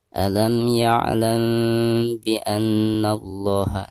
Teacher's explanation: cara membacanya itu harus disamarkan disertai dengan dengung. Namun kedua bibir kita harus direnggangkan sedikit ya. Contohnya alam ya'lam bi anna Allah, seperti itu ya. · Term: ikhfa syafawi